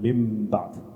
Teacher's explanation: Here is the noon followed by a ba. This noon gets converted into a mim